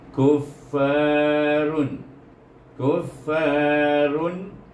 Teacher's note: Run baca bunyi tak ada dengung, tak ada panjang. Dia pasal dibaca dengan izhar. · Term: izhar halqi